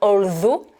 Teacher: Et dans although, hein, c'est le TH qui ici se prononce un peu comme un the, mais en tout cas, toujours important de mettre bien la langue sur les dents supérieures